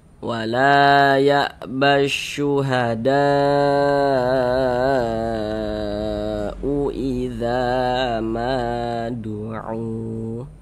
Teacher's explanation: Mad tabi'i yang bertemu dengan huruf hamzah dalam satu kata, maka dia berubah nama menjadi mad wajib muttasil. Panjangnya mad wajib muttasil itu wajib harus dibaca minimal 4 harokat. Nah, jadi panjangnya itu 4 sampai dengan 5 harokat.